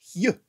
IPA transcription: hj